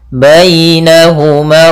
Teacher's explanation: Ini bacaan lin, yang dimana dalam pelafalan ya-nya harus lembut